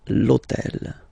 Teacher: in French we don't pronounce H, okay, so basically the first sound of the word is the vowel O, okay, so for the same reason, needs to disappear.